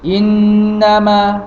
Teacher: Jadi harus berdengung. Jadi huruf nun bersabdu dikeluar di mana? Di rongga hidung. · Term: wajibul ghunnah